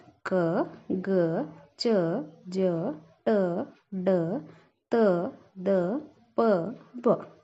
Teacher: ಕಡಿಮೆ ಉಸಿರಿನಿಂದ ಉಚ್ಚರಿಸಲ್ಪಡುವ ಅಕ್ಷರಗಳಿಗೆ ನಾವು ಏನಂತೀವಿ? ಅಲ್ಪಪ್ರಾಣ ಅಂತ ಹೇಳಿ ಕರಿತೀವಿ.